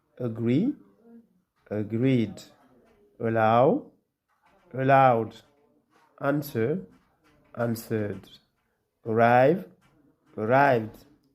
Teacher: the ed is pronounced as de, so there is no extra syllable